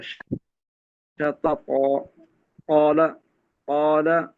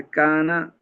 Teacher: الف ساکن، اس سے پہلا جو حرف ہے وہ طا ہے، وہ موٹا ہے. الف کو بھی موٹا پڑا جائے گا.